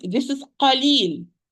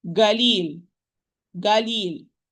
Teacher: In some country, they have this accent as an accent. The qaf, they turn the qaf into ga. They say instead, this is qalil.